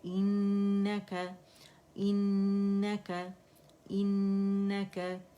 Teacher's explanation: next है इन्नका इन्नका, हमजा कसरा ई है और नून जो है हर गुन्ना मुशद्दद है, तो यहाँ पे हम 2.5-3 काउंट का हमने गुन्ना करना ही करना है